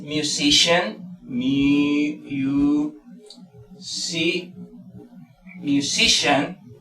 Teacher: Por ejemplo, así mismo tenemos sian, que por ejemplo aquí es musician, musician. Entonces mayor fuerza de voz está en si, porque termina en sian.